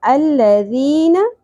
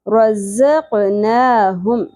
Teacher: रज़क़ ज़, अब यहाँ पे देखें ना, ज़ और ज़ाल में आपको डिफरेंस फील होगा। अल्लज़ीन, ज़ाल नरमी से, रज़क़नाहुम, ज़ शिद्दत से होगा, ठीक है, और इसमें सीटी की आवाज़ होगी। क़ौफ़, क़ौफ़ पुर होगा और क़ौफ़ साकिन होने की सूरत में क़लक़ला होगा।